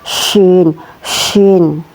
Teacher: tempatnya huruf shin di tengah-tengah lidah bersama langit-langit mulut atas